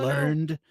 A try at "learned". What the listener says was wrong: You don't pronounce it ed, okay?